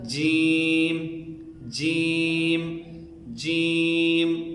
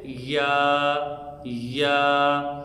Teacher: زبان کا درمیانی حصہ اور اس کے مقابلے میں جو اوپر والا تالو ہے، اس سے یہ 3 حروف نکلتے ہیں، یعنی زبان کا درمیانی حصہ اور اس کے بالمقابل اوپر کا تالو، اس سے جیم شین یا نکلتے ہیں۔ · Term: مخرج نمبر 7